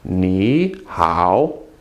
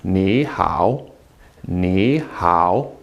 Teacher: you make the first one a second tone you change it to second so actually it becomes need how to be honest with you